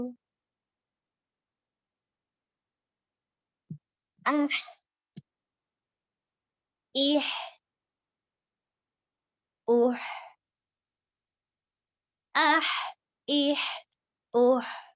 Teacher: جو وسط الحلق عین اور ہا کے ساتھ آ رہا ہے اس میں زیادہ ہوا ہوتی ہے آواز نکلنے میں زیادہ ہوا آتی ہے.